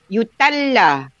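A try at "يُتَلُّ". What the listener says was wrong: Yutallu. Ya, mudhari itu dhamma belakangnya.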